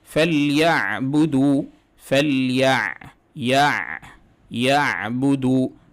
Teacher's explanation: عین ساکنہ کی آواز اچھی طریقے سے اپنے مخرج سے نکلنی چاہیے، موٹی نہیں ہونی چاہیے۔